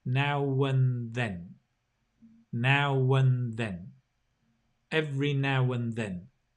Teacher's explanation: the an becomes un